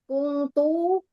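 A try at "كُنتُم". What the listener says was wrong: Iya, kungtum bukan kungtu, kungtum. Kuntum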